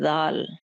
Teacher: ज़ाल को भी उसी तरीके से जुबान की नोक को सामने के दो दांतों के किनारों के साथ लगाएंगे तो इसकी आवाज अदा होगी। इसमें जरा भी सख्ती नहीं पैदा की जाएगी।